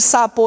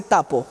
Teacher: la sonoridad es igual, los dos son sordos. El punto articulatorio, los dos son alveolares. Los dos son orales.